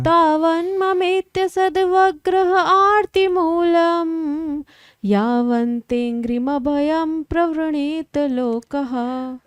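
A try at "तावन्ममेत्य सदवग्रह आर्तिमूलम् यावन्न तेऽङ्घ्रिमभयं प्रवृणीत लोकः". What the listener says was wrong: तावन्ममेत्य सदवग्रह आर्तिमूलम् यावन्न तेङ्ग्रिभयं प्रवृणीत लोकः। ना भी था उसमें, कोई बात नहीं, ठीक है।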